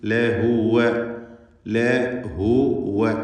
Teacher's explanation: 2 ചുണ്ടുകൾക്കിടയിൽ നിന്ന് ഉച്ചരിക്കേണ്ട വാവ് ലഹുവ എന്ന് വ്യക്തമാക്കണം.